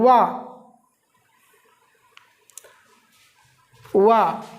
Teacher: वा जो है वो दंत और ओष्ठ से मिलकर बना है, दंत ओष्ठ। वा का उच्चारण स्थान भी दो से होता है, एक दंत से होता है, एक ओष्ठ से होता है।